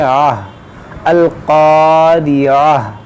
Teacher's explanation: اب یہاں پر دیکھیں یہ گولتا ہے، اس کا بھی قاعدہ آپ یاد رکھیں، ہمیشہ یاد رکھیں کہ جب بھی گولتا ہو اور گولتا پر آپ کو وقف کرنا ہو یعنی رکنا ہو، تو گولتا کو رکنے کی صورت میں ہا ساکنہ سے بدل دیا جاتا ہے، اس کو ہم پڑھیں گے آہ، القاریہ، ٹھیک ہے، کیونکہ یہاں پر وقف ہے، گول دائرہ ہے، تو یہاں پر رکیں گے ہم، تو اس کو ہا ساکنہ پڑھیں گے، القاریہ۔